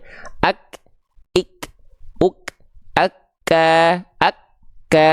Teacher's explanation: ak enggak gitu kan tapi ak syiddah keluar pertika nafas ak pasti syidah dulu baru keluar percikan nafasnya